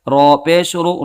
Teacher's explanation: را کے اوپر پیش ہے، پیش کو جلدی پڑھے، تھوڑا بھی نہ کھینچے